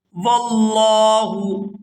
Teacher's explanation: یہاں بھی لفظ اللہ کے لام کو پورا ادا کریں گے اور کھینچ کر ادا کریں گے کیونکہ لفظ اللہ کے لام کے اوپر کھڑی زبر بھی ہے۔